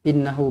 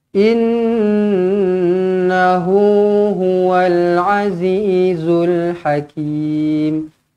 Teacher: Nun sabdu di sini dengungkan dengan dua harakat wajibul ghun innahu huwal Azizul Hakim Kim dibaca dengan panjangnya dua atau empat